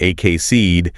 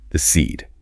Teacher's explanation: And if you miss that stress, if you say something like ak seed, the word just loses all its punch. You absolutely must put the emphasis emphatically on that second syllable.